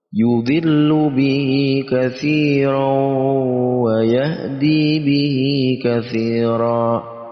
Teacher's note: Tanwin bertemu dengan wawu, idgham bi gunnah, kita masukkan tanwin ke dalam wawu, makanya wawunya mempunyai tasydid, lalu kita dengungkan wawu